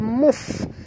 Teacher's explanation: Minal alif lam qamariyah bunyikan lam yang mati dengan jelas. Muf bunyikan fa, hamas pada huruf fa, · Muf bunyikan fa, hamas pada huruf fa, muf, ya. Ketap gigi atas ke bibir bawah, muf, keluarkan angin